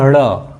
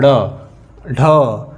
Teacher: जब भी हम ड़ और ढ़ बोलते हैं तो जीभ एकाएक ऊपर जाती है और तुरंत फेंक देती, यानी बाहर करती है, यानी जीभ जो ऊपर होकर के तुरंत बाहर आती है। · जीभ एकाएक अंदर जाती है, इसके बाद तुरंत बाहर आती है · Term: उत्सृप व्यंजन